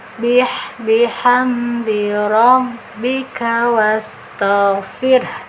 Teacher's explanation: Tetap ke mahroj ha besar ini yang ada di tenggorokan bawah ya. Nah, walaupun tidak keras tapi harus dibunyikan vokal huruf h-nya.